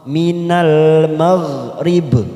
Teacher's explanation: huruf ghain sukun bukan kol-kolan, maka jangan dipantulkan, kita tahan